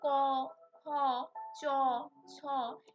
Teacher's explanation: এগুলো আমরা উচ্চারণ করার সময় কোথাও কিন্তু কম্পিত হচ্ছে না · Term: অঘোষ ব্যঞ্জন ধ্বনি